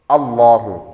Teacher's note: یہاں پر لفظ اللہ کے لام سے پہلے حرف پر زبر ہے تو اس لیے لفظ اللہ کے لام کو پر پڑھیں گے